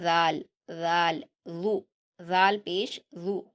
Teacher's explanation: ذال کا مخرج جو ہے نا وہ آپ کی زبان کی نوک اوپر کے 2 دانتوں کی کنارے سے ملے گی اور آپ کی زبان کی نوک تھوڑی باہر آ جائے گی